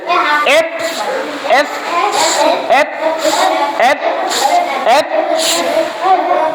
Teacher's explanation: এই দেখো এফ এফ, letter name হচ্ছে এফ, লেটার নেম হচ্ছে কি এফ, আর লেটার সাউন্ড হচ্ছে কি look at me how I moves my mouth, look at me that upper lower lip, my lower lip, আমার lower লিপটা আপার লিপ দিয়ে touch করছি, দেখো make sound, okay everyone, sound হচ্ছে না, কিরকম সাউন্ড হচ্ছে, একটু বাতাস বের হচ্ছে তাই না, ভাইব্রেটের মতো হচ্ছে, ওই যে মোবাইলে ভাইব্রেট দেয় না, ওরকম ভাইব্রেটও না, একটু আলতো ভাবে।